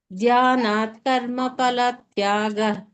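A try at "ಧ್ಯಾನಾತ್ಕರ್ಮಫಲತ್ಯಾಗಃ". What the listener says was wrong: ಇಲ್ಲಿ ನೀವು ಮಹಾಪ್ರಾಣಗಳನ್ನ ಹೇಳ್ತಾ ಇಲ್ಲ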